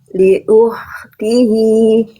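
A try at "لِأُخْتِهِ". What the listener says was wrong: Jadi rasakan si makhrajnya berada lebih luar, ya. Li ukhtihi.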